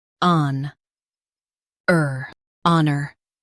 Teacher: Emphasize on and keep er light.